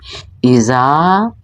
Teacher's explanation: چونکہ حمزہ ہے تو اس کی ادائیگی جو ہے وہ حلق کے آخری حصے سے ہوگی۔ زال الف زبر زا، الف مدہ ہے چونکہ الف ساکن اور اس سے پہلے زبر ہے، تو یہ الف مدہ کی پہچان، ایک الف اس کو لمبا کیا جائے گا۔